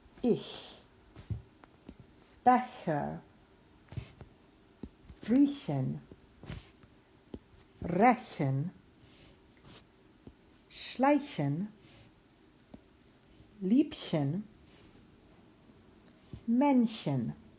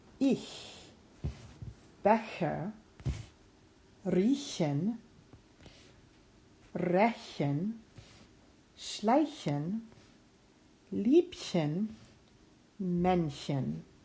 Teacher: You hear that H is so forward in the mouth, it almost sounds like an English sh, sh sound, but it is not. It's just a very strong h in the front of the mouth. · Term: Ichlaut